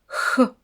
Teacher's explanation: Attention, les cordes vocales ne vibrent pas.